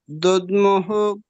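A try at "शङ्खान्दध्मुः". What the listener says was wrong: ಇಲ್ಲಿ ಮಿಸ್ಟೇಕ್ ಇದೆ ಪ್ರಭುಜಿ ದುದ್ಮುಹು ಅಲ್ಲ ದದ್ಮುಹು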